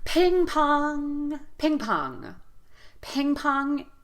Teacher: in the word ping pong we're going to give equal stress to both syllables